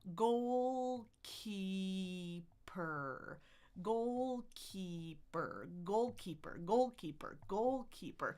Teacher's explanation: My tongue is in the middle. Then it raises for what we call a vocalic R.